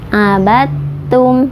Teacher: membacanya tidak abadtum, ya, tapi diidghamkan, dimasukkan ke huruf ta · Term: idgham mutajannisen